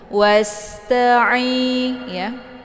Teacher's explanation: Kemudian ta dibaca pendek, ai dibaca panjang. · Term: mad tabi'i